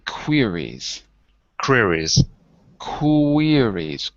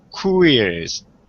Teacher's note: when we speak fast it's not three syllables it's two queries but if you slow it down you'll hear there's an ooh before the ear